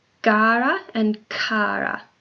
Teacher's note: So the G is voiced and the C is not, resulting in a small variation in the sounds produced. The G and the C are both velars, meaning that the sound is made by lifting the back of the tongue towards the velar or the soft palate. The two sounds are also examples of stops in the Italian language.